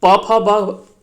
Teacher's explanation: प फ ब प वर्ग का जितना भी होता है ये कहाँ से उच्चारण होता है? ओष्ठ से होता है, यानी ओठ से इसका उच्चारण होता है।